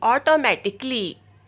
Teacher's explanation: Automatically has 5 syllables, not 6. The last A isn't pronounced.